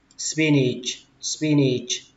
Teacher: Cái âm này âm A, tuy nhiên khi mình đọc thì mình đọc là thành âm Y các bạn ạ.